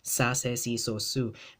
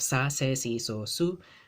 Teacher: it's not that European S, it's that Filipino, Latin American kind of English S, right? There's a S, not the sh, right?